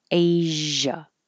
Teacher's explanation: Asia has the voiced sh, so it's the same position as sh, but you have voicing, so it sounds like zh